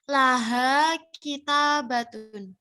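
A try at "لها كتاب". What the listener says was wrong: Jangan kita batun, biasa saja.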